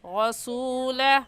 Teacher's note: रा के ऊपर ज़बर है तो रा को पुर यानी मोटा करके पढ़ेंगे